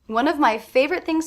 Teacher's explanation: I am making that a stop T I'm not releasing it I'm going straight into the th